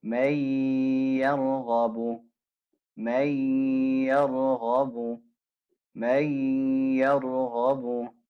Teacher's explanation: So you can hear the idgham, right? The merging. And the ghunna.